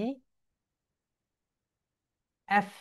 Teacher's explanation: সবাই আমার সঙ্গে বলো, এই এফ, উপরের দাঁত নিচের ঠোঁটের সঙ্গে এফ।